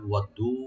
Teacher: ওয়াদ্দু, ওয়া ওপেন রাখবেন, দালটাকে ডাবল করে একালে টানবেন, ওয়াদ্দু। লাউ এখানে হারফে লিন।